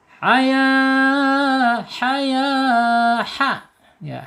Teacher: Ada bawah, ada tengah, ada atas. Ha ini masuk ke tenggorokan tengah ya